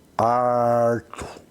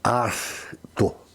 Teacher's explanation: É o R chamado R retroflexo, ou seja, o piracicabano, ele joga a língua para dentro. Então vai falar arto.